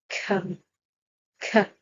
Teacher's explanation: Now, when you produce the Ka sound, you feel that it's a solid, rough, harsh sound coming out from the top of your throat